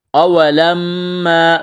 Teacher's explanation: اولما اصابتکم مصیبۃ قد اصبتم مثلیہا قلتم انا ھذا۔ اولما میم مشدد ہے، آواز ناک میں چھپائیں گے، غنہ کریں گے، اس کو کھینچنا ہے۔